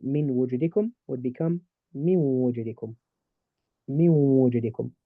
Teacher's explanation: I merge the noon into the waw and I make a nice ghunna sound. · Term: idgham with ghunna